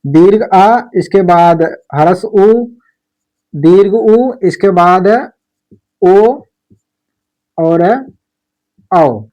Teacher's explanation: जो इतने हमारे स्वर हैं ये हमारे जीभ के पीछे वाले हिस्से से बोले जाते हैं। पीछे वाले भाग से और हम जीभ की स्थिति के आधार पर तीन भेद देखे। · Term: पश्च स्वर